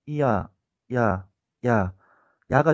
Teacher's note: 야라는 소리가 발음되는 과정을 흔히 야 이렇게 말하지만 발음되는 소리의 과정을 나누어서 생각을 해보면 처음에 이와 유사한 소리에서 아로 가면서 난다는 걸 알 수가 있습니다. 이에서 아로 빠르게 해보면 이야, 야, 야, 야가 된다는 걸 알 수가 있습니다. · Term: 반모음